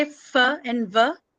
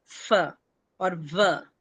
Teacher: the lower part of your upper teeth, it touches the lower back of your lower lip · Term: labiodental